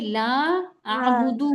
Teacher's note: दू को हमें बिल्कुल नहीं खींचना है